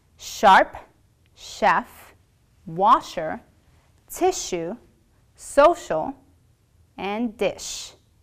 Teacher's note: you will pucker your lips bring the body of your tongue closer to the roof of your mouth but you're not actually going to touch the roof of your mouth